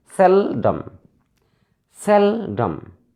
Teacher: There are two syllables here, often. So we should stress on the first syllable.